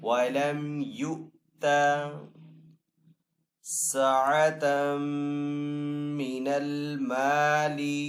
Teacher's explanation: یہاں پہ میم کے اوپر تشدید ہے تو میم مشدد کے اوپر ہمیشہ غنہ ہوتا ہے